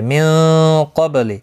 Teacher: नून साकिन के बाद हुरूफ़ इख्फ़ा का क़ाफ़ है, इख्फ़ा हकीकी होगा, बा साकिन पर क़लक़ला होगा